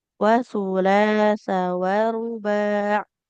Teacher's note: Taknya enggak panjang, wawunya juga tidak panjang.